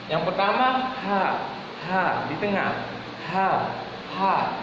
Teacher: Yang pertama huruf ha kecil, dia di tengah tenggorokan, di tengah.